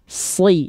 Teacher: huruf shad adalah huruf yang tebal, maka pangkal lidahnya diangkat.